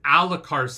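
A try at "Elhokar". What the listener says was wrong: Elakar. The way you were saying it, I was picturing an A, and I couldn't picture. Elakar. E-L-K.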